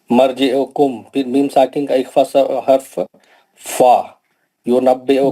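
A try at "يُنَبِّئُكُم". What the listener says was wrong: میم ساکن میں اخفا نہیں ہوتا، میم ساکن کا اظہار شفیع ہے،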